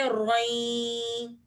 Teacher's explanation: دو زبر کی تنوین کو یا کے ساتھ ملائیں گے اور غنہ کریں گے